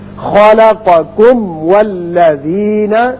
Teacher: میم کا اچھی طرح اظہار کیجئے، پھر واو پر ہونٹ کو گول کیجئے، اس لیے واو ادا ہوگا۔